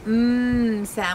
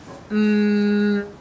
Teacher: the sound comes out through our nose if we block our nose the sound will stop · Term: nose sounds